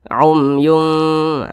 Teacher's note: cara membacanya itu disamarkan dan kadar samar dan kadar dengungnya itu seimbang · didengungkan ditahan suaranya dipanjangkan sejenak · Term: ikhfa Hakiki ausat